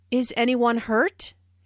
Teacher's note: This is a yes/no question, so the intonation rises at the end. Notice how this question is asked in a worried way.